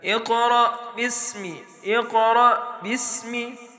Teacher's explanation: را کے اوپر زبر ہونے کی وجہ سے را موٹا پڑی جائے گی، اور یہ حمزہ، اس حمزہ میں پھر جھٹکا نہیں دینا، صرف قاف کے اوپر جھٹکا دینا ہے۔ اقرأ اقرأ اقرأ، یہ غلط ہے، حمزہ کے اوپر جھٹکا دینا یہ غلط ہے۔